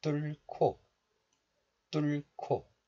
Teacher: the sound 히읗, H, is combined with the consonant 기역 and becomes 키읔, K sound. It's called aspiration, and I'll also tell you this later.